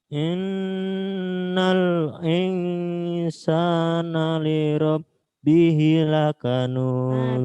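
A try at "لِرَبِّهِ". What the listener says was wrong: Bihi ada fathah kasroh berdiri jadi panjang. Lirabbihi panjang. Lakanud. Ada qalqalahnya di situ.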